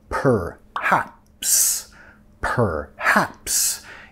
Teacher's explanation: Per. Ya reduciendo la primera sílaba